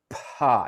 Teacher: In fact, you can touch that air coming out. Pa, you can feel that puff of air, and that's because the air is coming out and then the vocal cords are vibrating.